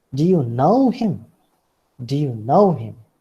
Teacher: Know is the word that you take on the rising level.